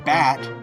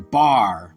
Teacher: A, like in bat, changes a bit to ah, as in bar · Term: R-controlled vowels